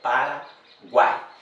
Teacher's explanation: esta aqui eu chamo que é uma palavra que é tritongo oral ou seja o som ele vai sair basicamente pela boca ou seja Paraguai eu abro a minha boca para produzir esse